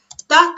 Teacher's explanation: ता का उच्चारण करते समय हमारी जिह्वा जो है दांतों को पूरी तरह स्पर्श करती है।